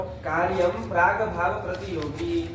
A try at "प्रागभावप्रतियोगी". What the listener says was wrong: हाँ प्राग भाव प्रतियोगी। अरे आगे गुरु अक्षर संयोगी गुरु होता है ना, तो गुरु वर्ण जब बोलना होता है तो थोड़ा गुरु की तरह बोलो। आगे संयोग पर में है ना, प्रतियोगी पर का संयोग है तो ऐसे ही बोलोगे कार्य प्राग भाव प्रतियोगी, ऐसे नहीं अशुद्ध उच्चारण है।